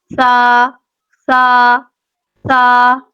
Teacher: ہمیں سا کو بہت نرمی سے پڑھنا ہے، اس میں ہمیں سیٹی نہیں لے کے آنی